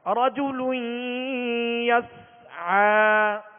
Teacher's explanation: عین کو وسط حلق سے ادا کریں گے